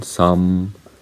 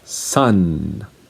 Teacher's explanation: some, my lips are closed. But for this one, sun, my lips are open. They're not closed.